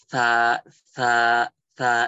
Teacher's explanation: Sa itu digigit. Sa itu masuknya hamas.